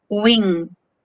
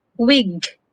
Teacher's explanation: These are both voiced velar consonants. However, nga is nasal, while ga is a stop.